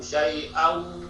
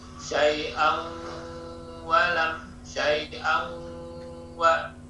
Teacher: Syai'an, tanwinnya masuk ke huruf wawu, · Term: idgham bi gunnah